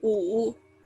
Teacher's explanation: And then there's the third tone. So it takes like a curve.